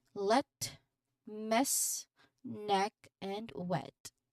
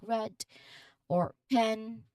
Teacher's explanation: the vowel sound e is brief and your tongue remains relatively flat and central into your mouth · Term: short crisp e sound